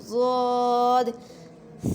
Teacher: ضاد کو موٹا کر کے پڑھتے ہیں اور اس میں تھوڑی سی گونج آتی ہے۔